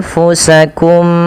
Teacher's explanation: memasukkan mim pertama kepada mim kedua dan ditahan suara nya. Maka anfusakum, tidak langsung anfusakum min, ya, tapi ditahan dahulu. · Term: idgham mimi